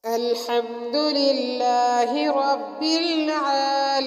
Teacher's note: سورۃ فاتحہ کی پہلی آیت الحمدللہ رب العالمین میں ہم نے حا کو حلق سے نکالا، للہ لفظ اللہ کو باریک پڑھا، اور رب العالمین کے رو کو پر پڑھا یعنی موٹا پڑھا، اور عالمین کا عین کو بھی ہم نے حلق سے نکالا۔